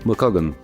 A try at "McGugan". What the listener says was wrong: Not quite, it's McGugan, it's like double O. But that was pretty close.